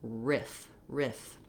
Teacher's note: you want to be able to just have a lax front high vowel. And then you're closing your upper teeth and lower lip together to make that continuing sound. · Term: I vowel